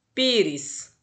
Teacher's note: Pires é uma paroxítona, o pi é mais forte.